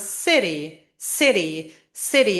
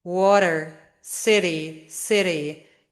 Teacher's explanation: It is a very quick and fast tap of the tongue. So you quickly tap the tip of your tongue against the gum ridge. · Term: flap T